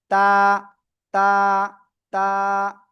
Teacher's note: জিহ্বার আগা, সামনের উপরে 2 দাঁতের গোড়ায় লাগাবো, এই যে লাগিয়ে, তার বরাবর উপরে তালুর সাথেও না, জিহ্বার আগা সামনের উপরে 2 দাঁতের গোড়ায় লাগিয়ে আপনার এক লিপটা নিয়ে সিম্পল ভাবে উচ্চারণ করতে হবে।